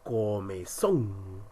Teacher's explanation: la mayor fuerza de voz está en son?